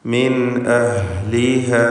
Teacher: മിൻ എന്നതിൽ സാക്കിനത്തായ നൂൻ ശേഷം ഹംസ ഇൽഹാർ ഹൽഖി നൽകി മണിക്കാതെ വെളിവാക്കണം.